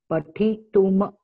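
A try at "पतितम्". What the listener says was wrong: Not ma. It is not ma. It is not ma. There is no other. There is no ma, it is only makara, only the consonant is there. It is patitum. How it is patituma?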